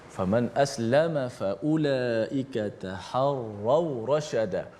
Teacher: Sempurnakan bacaan tafkhim ataupun tebal huruf ra dalam ayat ini, yang mana ra yang berbaris di atas.